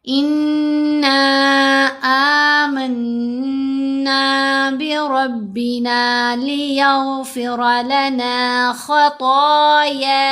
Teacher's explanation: यहाँ पर भी नून पर हमने गुन्ना भी करना है दोनों जगहों पर. इस नून के ऊपर मद मुनफसिल है, नून को 3 से 4 हरकत की मिकदार लंबा करेंगे